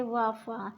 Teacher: दंतोष्ठ निचले होंठ और ऊपर के दांतों से